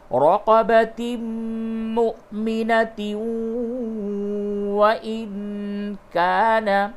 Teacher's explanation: تنوین کے بعد واو ہے، ادغام مع الغنہ ہوگا حالت وصل میں